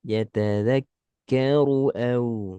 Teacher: Ru-nya pendek. Ru tebal tapi pendek.